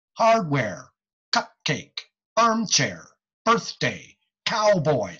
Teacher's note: two syllable words with even emphasis on both syllables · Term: spondee words